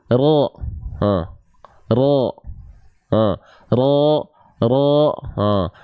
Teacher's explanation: Kalau kita ibaratkan ini adalah lidah, huruf ro itu dilafalkan bukan dari ujungnya banget, tapi dia dilafalkan dari punggung lidah. Punggung lidah itu bagian yang ini.